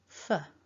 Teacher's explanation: we need a little bit of air hissing out, top teeth to bottom lip, and then the weak schwa.